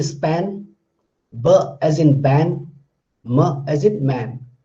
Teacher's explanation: These three sounds are bilabial sound.